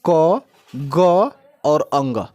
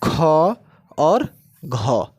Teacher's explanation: अल्प प्राण के रूप में क ग और अंग ये तीन अल्प प्राण जबकि महाप्राण की बात करें तो महाप्राण के रूप में ख और घ